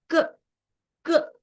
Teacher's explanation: ನಮ್ಮ ಬಾಯಿಯಲ್ಲಿ ಒಳಗಡೆ ಇರುವಂತ ನಾಲಿಗೆ ಎಲ್ಲಿನೂ ತಾಕ್ತಾ ಇಲ್ಲ, ಹಲ್ಲುಗಡೆನೂ ಕೂಡ ತಾಕ್ತಾ ಇಲ್ಲ, ಕೇವಲ ಕಂಠದಿಂದ ಬರ್ತಾ ಇದೆ. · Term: ಕಂಠವರ್ಗ